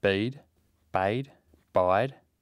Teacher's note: ‘Bead’ has more of a steady state at the end than the beginning, ‘bide’ has more of a steady state at the beginning than the end, and ‘bayed’ is simply intermediate between the two.